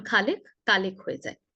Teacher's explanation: চট্টগ্রামের বেশি সমস্যাটা হয় খ নিয়ে। খ উচ্চারণ করতে গিয়ে ক হয়ে যায়।